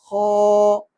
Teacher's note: इसके बाद खौ आ जाता है, तो उससे थोड़ा ऊपर जो अंदर हल्क के अंदर एक गोश्त का टुकड़ा लटक रहा होता है जिसको कव्वा कहा जाता है, वहां से थोड़ा सा पीछे करके खौ अदा होता है। खौ, थोड़ी सी खुरदरी आवाज और मोटा, होंठ इसमें गोल ना हो।